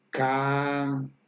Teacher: la vocal a es más larga